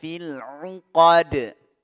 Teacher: Ya, qalqalah huruf dal, ya, mantul.